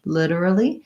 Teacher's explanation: I would say the main difference for literally is that the T sound is a flap. We do a D sound, literally.